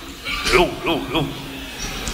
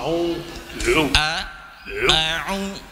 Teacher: العين فقط ليس من الخيشوم. أعو من الحلق.